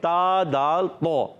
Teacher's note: تا کا مخرج زبان کا سرا اور سامنے اوپر والے دانتوں کی جڑوں سے. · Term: حروف نطعیہ